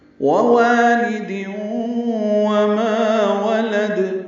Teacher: ووالد وما ولد، واو کی مشق ہو رہی ہے اس میں، واو ہونٹوں کی نا تمام گلائی سے ادا کریں گے، دوسری واو کو لمبا کریں گے